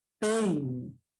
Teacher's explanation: La E es la vocal que lleva mayor fuerza de voz. La I es la cerrada que carece de fuerza de voz. · Pei con mayor fuerza de voz en la E. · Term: decreciente